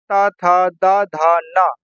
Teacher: त था द धा न ये दंत से बोले जाते हैं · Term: त वर्ग